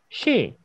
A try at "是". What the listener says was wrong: 是혀 말으세요. She 아니고 입술은 절대 동그라미 하지 마세요. 그 이 있을 때는 입술 동그라미 하는 거 아니야. 다 미소예요. 是.